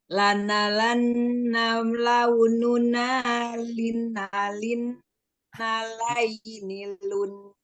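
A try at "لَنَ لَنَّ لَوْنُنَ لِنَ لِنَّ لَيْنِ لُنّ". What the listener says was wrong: yang ada tasdidnya hanya 3 saja. Ini sama ini. Jadi yang ini jangan dikasih tasdid, jangan lina lin, nah, jangan ya, tapi lina lin seperti itu.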